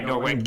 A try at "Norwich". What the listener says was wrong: Norwich. Norwich. It's not Norwich. It's Norwich. Pretend the W is silent. Norwich. Norwich.